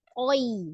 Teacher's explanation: Tapi ketika dia posisi di wasol, maka madlin pendek ya. Tapi harus jelas ya sukunnya i, bukan e ya. Jadi toi, bukan toy ya.